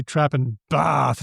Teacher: I might be cultivating a trap bath split where I say trap and bath differently